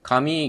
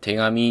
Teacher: 紙が手紙になるのは、無声音が有声音になってるだけで、両方破裂音だし、両方軟口蓋音だし